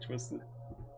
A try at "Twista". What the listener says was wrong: no, Twista. Yeah, with an A.